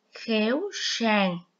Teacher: tiếng sàng có âm S khi đọc mình cũng cong lưỡi